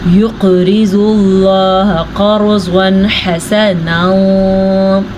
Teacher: لفظ اللہ سے پیچھے والے حرف کے اوپر پیش ہے تو لفظ اللہ کو ہم پر پڑھیں گے۔ را ساکن سے پیچھے والے حرف پہ زبر ہے تو را ساکن کو ہم پر پڑھیں گے، اور ضاد کو پر پڑھیں گے کیونکہ ضاد تو ہمیشہ ہی پر پڑھا جاتا ہے۔